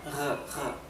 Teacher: Recuerden que la r alemana es más eh gutural que dental. La r del español es dental.